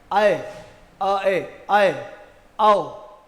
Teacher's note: इसको हम आई बोल जाते हैं, आई नहीं है, ये ऐ है, ध्यान रखना। अ और ए मिलकर बना है ऐ।